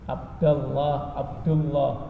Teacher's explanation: Lam dari asma Allah ini fathah atau dhammah dibaca dengan lamnya dengan tafkhim, tebal, menebalkan.